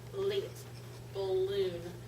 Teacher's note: the tip of the tongue touched the hard ridge behind the upper teeth and the tongue is narrow and air flows around the sides of the tongue